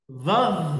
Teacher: Supaya tidak mantul, muz. memang dho ini punya sifat namanya rafwah harus ngalir.